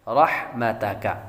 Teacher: رحمتک را پر پڑھیں گے, حا بریک پڑھیں گے, تا بھی بریک اور کاف بھی بریک.